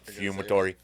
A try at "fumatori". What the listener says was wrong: Not Frumatori. Fu, not fru. Fu.